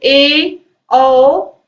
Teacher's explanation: अर्ध संवृत्त यानी कि आधा वृत्त बनेगा जब आप ए बोलोगे और ओ बोलोगे